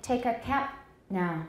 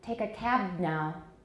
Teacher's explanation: a final voiceless stop is much longer than a final voice stop